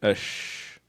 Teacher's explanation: There's no closure. There's gaps and the air is being pushed through.